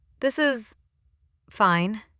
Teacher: That dead pan, a flat, emotionless delivery, signaled gentle irony, not complaint. · Tiny pause, stretched S, very flat voice.